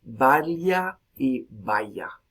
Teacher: no hay distinción entre lateral palatal, ya, y fricativa palatal, ya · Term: yeísmo